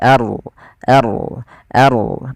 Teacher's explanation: a-nya tipis rnya tebal maka di sini ada bacaan namanya ro tafkhim. Ro yang kita baca dengan bacaan tebal tidak dibaca arbaina tapi ar ar maka arbaina bukan arbaina tapi arbaina.